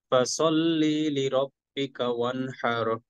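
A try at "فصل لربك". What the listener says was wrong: আচ্ছা, এখানে ফসল্লি, আবার এই লিরব্বিকাতে চলে যাব। হ্যাঁ, ফসল্লি লিরব্বিকা, একটু দ্রুত, কোনো টান নাই।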